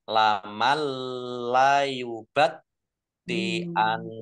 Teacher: Langsung masuk ke huruf lam, nun sukunnya tidak dibaca. Ditandai lamnya ada tasdidnya, tetapi tidak mendengung. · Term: idgham bila gunnah